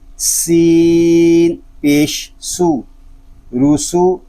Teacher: سین میں سیٹی کی آواز آئے گی کیونکہ یہ سین حروف صفیریہ میں سے ہے